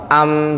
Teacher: makhraj mukamalnya mim juga aktif yakni kedua bibir yang merapat